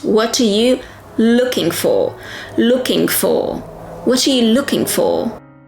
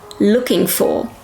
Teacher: Two consonants, g and f. You do not emphasize the g in ing.